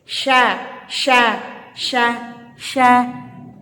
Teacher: Dia mainnya tengah lidah dengan langit-langit. Sya. Nah, tengah lidah dengan langit-langit.